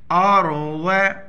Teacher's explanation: را سے پہلے زبر ہے موٹا پر پڑھیں گے